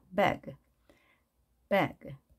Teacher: 이 소리를 배그 해서 같은 높이로 하는 것이 아닌 이런 느낌으로 마치 산등성이에서 계곡으로 내려가듯 발음을 합니다.